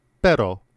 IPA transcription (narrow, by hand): pεɾo